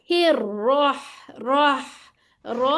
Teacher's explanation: तकरीर आनी चाहिए, वाइब्रेशन आनी चाहिए